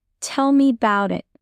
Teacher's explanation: Use rising tone on tell me and fall slightly at the end. That rhythm shows empathy.